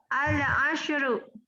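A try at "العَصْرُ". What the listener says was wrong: Asru. Pakai shad, Bu. Bukan ashru. Al-asr.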